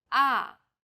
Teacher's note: the fourth tone Falls sharply and quickly from a high pitch